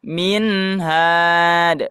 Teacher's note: Min tidak dibaca ming ya.